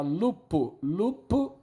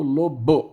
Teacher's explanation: um fonema surdo virou sonoro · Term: sonorização